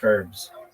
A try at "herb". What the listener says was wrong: It's more like herb. No H sounds.